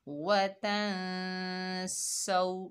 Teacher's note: सीन के ऊपर ज़बर है, आगे वाव साकिन है, सीन को वाव साकिना से मिलाएंगे, ये वाव लीन है, इसको नरमी और जल्दी से अदा करेंगे और सीन में सीटी पैदा होगी। वतन सौ, नून के ऊपर ज़बर, बगैर खींचे पढ़ेंगे ना।